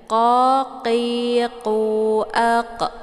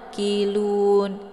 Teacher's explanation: Saat melafadzkan itu pangkal lidahnya terangkat ke langit, tersentuh dengan langit yang lunak